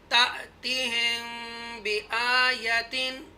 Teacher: हमजा साकिन है, यहाँ ट्विच करेंगे, थोड़ा सा जर्क से पढ़ेंगे, झटके से पढ़ेंगे।